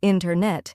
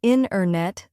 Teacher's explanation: The T sound gets softer or disappears. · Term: dropped sounds